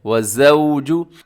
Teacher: یہاں پہ زا ہے اور زا میں کیا ہوتا ہے؟ سیٹی ہوتی ہے، تو آپ نے اس کا خیال کرنا ہے